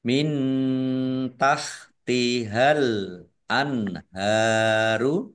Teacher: Nun sukun bertemu dengan huruf H, bacaan izhar dibaca jelas. · Nun sukun bertemu dengan huruf ta, bacaan ikhfa dibaca samar-samar. Al-anharu alif lam komariah ditandai lamnya dibaca sukun.